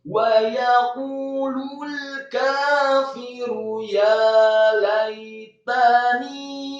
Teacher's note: Wa yaqulul kafiru ya laitani, kata ya laitani, ya-nya fathah dua harokat, laitani lamnya fathah satu harokat, kemudian ya yang sukun dibaca mati, tani dan taknya dibaca tipis fathah satu harokat, dan nunnya dibaca tipis kasrah dua harokat karena setelahnya ada ya sukun